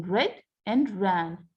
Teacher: the tip of the tongue strikes against the teeth ridge a number of times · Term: trill, trill or rolled consonant